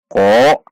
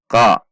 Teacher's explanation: Bukan dibaca dengan membulatkan bibir seperti ko, namun qa. Naikkan pangkal lidah.